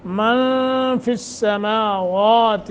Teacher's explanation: इख्फ़ा करेंगे आवाज़ को नाक के खैशूमे में ले जाकर थोड़ा सा खींच कर पढ़ने को कहते हैं